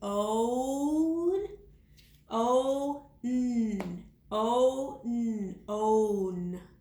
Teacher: When I say own, I hear that long O again in the beginning.